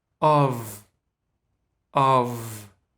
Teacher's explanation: actually pronounced not as off but as of that's crazy right there is no f there's no f sound in the end · the first sound in that preposition is actually it's not o it's not all it's not ah it's the schwa